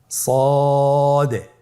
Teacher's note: জিহ্বার আগা সামনের নিচের দুই দাঁতের পেট ও আগার সঙ্গে লাগিয়ে উচ্চারিত হয় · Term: সদ